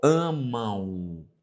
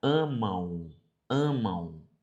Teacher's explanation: esse m ele traz um som de u